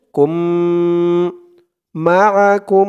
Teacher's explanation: এখানে গুন্না হবে মিম সাকিনে ইকফা